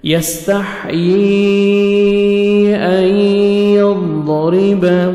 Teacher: نون سکون کے بعد حروف یرملون جو 6 لیٹرز ہیں ان میں سے یا آ رہا ہے تو ادغام کریں گے غنہ کے ساتھ، نوز میں ساؤنڈ لے کے جائیں گے